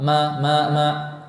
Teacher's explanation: Maksudnya huruf ba dia lebih besar, makhrajnya lebih kuat. Huruf mim tidak namun disertai dengan khayshum, disertai dengan udara yang mengalir dari rongga hidung. Khayshum itu artinya rongga hidung.